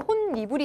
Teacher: 니은 첨가가 일어나서 혼니불이 되고요